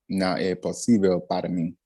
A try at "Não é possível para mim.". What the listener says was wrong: Unstress that O just a little bit more. P, like P. É possível.